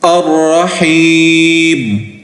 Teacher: وقف کی حالت میں میم کو ساکن کریں گے